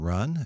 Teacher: it's maybe a little more of a guttural beginning to it but it's the closest thing is our R